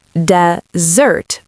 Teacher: Saying desert your friends is wrong in pronunciation. The verb desert is pronounced desert with second syllable stress.